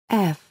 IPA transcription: f